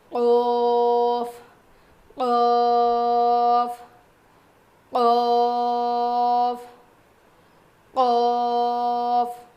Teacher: زبان کی جڑ اور اوپر کے تالو سے قوف ادا ہوتا ہے. تو جو ہماری چھوٹی زبان ہے نا, جو تالو ہے نا, وہ تھوڑا سا اوپر اٹھے گا جب ہم یہ پڑھیں گے.